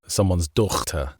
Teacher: there was a time when the GH was pronounced like a ch